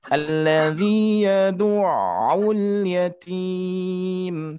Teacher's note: di sini lebih kepada mad arid disukun, yang mana ada mad terus ada huruf yang harus disukunkan. Maka terjadi panjang, kita ambil 4 harokat ya. Meskipun nanti diperbolehkan 2 harokat, 4 harokat atau sampai 5 harokat ya, sampai 6 harokat juga diperbolehkan.